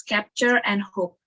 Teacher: a stop consonant with no release bursts like no audible indication of the end of its occlusion or hold